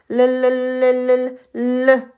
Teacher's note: 혀끝을 잇몸에 닿았다가 떼거나 혀의 양옆으로 공기를 흘려 보내면서내는 소리 르 르 할 때 르 하면서 혀끝이 그 치조 부분에 닿을 때 공기가 그 사이로 혀 양쪽으로 사이로 공기가 나오는 것을 확인할 수 있어요. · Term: 유음